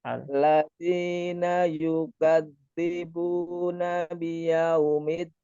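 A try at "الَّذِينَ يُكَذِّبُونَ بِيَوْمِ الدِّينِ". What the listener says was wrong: Ketika disambung seperti ada campuran T-nya. Mitin ya. Midi ya, bukan miti. Oh ya, berarti PR ya di dal yang bertasdid ini ya kadang tadi suaranya ada semacam campuran T ya ketika dari alladzi, tapi ketika hanya yaumiddin bisa.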